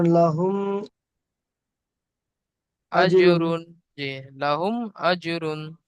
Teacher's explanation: কোন গুনা হবে না জাহির করে